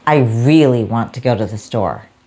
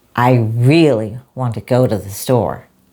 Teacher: Notice how really, go and store are louder, longer. The twos are almost invisible. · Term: rhythm and stress